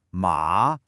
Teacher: The third tone. It goes down and then it comes back up. It's got this little dip in the middle.